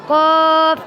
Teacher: یا بیخ سره ولګي نو هغې نه فا ادا کېږي قاف د ژبې بیخ بره تالو طرف ته اوچت شي او هغې نه قاف ادا کېږي